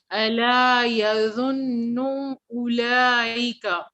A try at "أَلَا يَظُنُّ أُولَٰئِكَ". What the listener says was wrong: Shorter. There is غنة, but there is no wow. Listen to it. There is this noon, the green one, noon, has غنة, but no wow after it. So the proper pronouncing, ألا يظن أولئك.